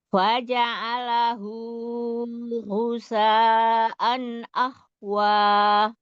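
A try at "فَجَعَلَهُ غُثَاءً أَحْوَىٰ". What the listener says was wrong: Cuman hunya dua harokat aja, jangan panjang-panjang ini domir apa matsil qasiroh nih sebutnya. Ada ha domir yang diapit oleh dua huruf hidup. Jadi cukup dibaca dua harokat. Faja'alahu gusaan ahwa.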